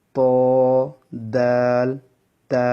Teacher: 11 নম্বর মাখরাজ, জিহ্বার আগা সামনের উপরে 2 দাঁতের গোড়ার সঙ্গে লাগিয়ে 3টি অক্ষর উচ্চারিত হবে